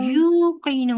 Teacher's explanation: नून वाओ मद्दा है ना बस बिल्कुल फ्लैट और लंबा करके पढ़ना है कोई झटका नहीं है इसमें